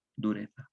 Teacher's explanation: Nosotros la pronunciamos como S por el llamado ceseo.